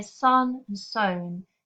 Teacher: The sown is significantly lower in its tone. And these falling lilts of the vowel sounds from a higher to a lower pitch create a really understated melancholy effect.